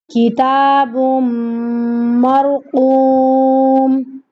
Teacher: بم پڑھنا ہے، بن نہیں پڑھنا یہاں پہ، کیونکہ یہاں پہ ادغام کا رول اپلائی ہو رہا ہے